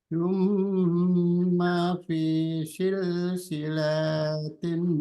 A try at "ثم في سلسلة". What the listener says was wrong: Silsilatin. Silanya dipanjang. Tsumma fi silsilatin.